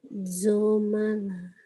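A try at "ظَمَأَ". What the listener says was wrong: balago, zoma'a, bukan zomala. kalau lama harus ada ke bawah saya bilang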